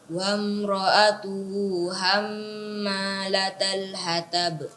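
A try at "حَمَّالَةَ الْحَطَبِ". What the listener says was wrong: Iya, kemudian huruf to ditebalkan lagi, tidak boleh dibaca hatab, tapi dibaca hatab. Ya, tob. Tidak dibaca hatab. Iya, ditebalkan, diarahkan ke bunyi huruf O.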